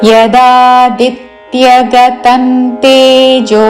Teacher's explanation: అనుస్వారము త వర్గములోని అనునాసిక అన్